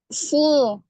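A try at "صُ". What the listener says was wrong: Lebih jelas lagi, domahnya jangan seperti huruf so, seperti fathah, su. Masih ada so, seperti terdengarnya domahnya kurang sempurna. Coba dimonyongkan lagi agar u-nya jelas, u-nya.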